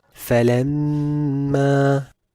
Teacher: The ghunnah of this mushaddad meme will also be extended and will be recited as falamma.